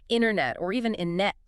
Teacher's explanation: Many native speakers, especially Americans, will pronounce the T after the N very softly or drop it entirely so it sounds like internet or even innet. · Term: dropped sounds